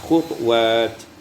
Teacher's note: bi iskan ta dengan sukun ta ma'al qalqalah